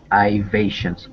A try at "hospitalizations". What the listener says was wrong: It's a z sound here. Z. That's a hard word. Many syllables to that.